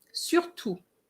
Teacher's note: So you don't pronounce the T.